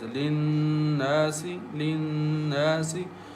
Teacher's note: Noon has shadda on it, so we recite with nasal sound as linnasi linnasi.